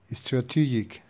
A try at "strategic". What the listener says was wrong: There's no E before strategic. Strategic.